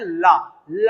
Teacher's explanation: तो जीभ क्या है, जैसे ही मुड़ेगी और पार्श्व बन जाते हैं, मतलब छिद्र बन जाते हैं जीभ में, इधर और इधर, तो दोनों तरफ से जीवा पार करके हुए निकलती करती है हवा, और ये बनता है ला बोलेंगे तो हवा इधर उधर से आपको महसूस होगी, इसलिए इसका नाम रख गया पार्श्विक। पार्श्व हमारे खुल जाते हैं और इधर से हवा बाहर हो जाती है और ला का उच्चारण होता है।